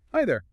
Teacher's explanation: Rising intonation on high, falling on there, friendly, open.